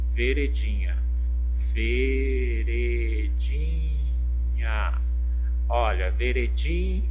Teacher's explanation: Olha, a sílaba tônica é o di.